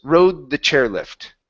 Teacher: so it's a D sound that comes from my throat because it is a voiced sound